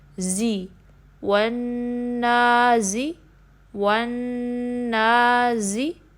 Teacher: دھیان رکھنا ہے کہ ایئر نہ آئے، یعنی جس کو ہم ہمس بھی کہتے ہیں، ٹھیک ہے؟ سا یعنی سین کی ساؤنڈ زا میں مکس نہ ہو